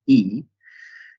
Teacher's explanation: we have the high unrounded front vowel which is e